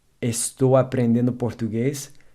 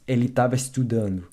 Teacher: the ''e-s'' in ''estar'' is dropped in casual speech